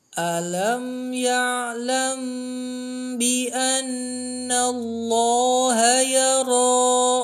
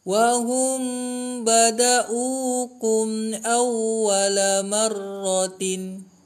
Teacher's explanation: Di gambar itu mim sukun tambah ba ya, atau tambah bisa diartikan plus atau bertemu. Yaitu membaca samar mim sukun dengan dengung 2 harokat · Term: ikhfa safawi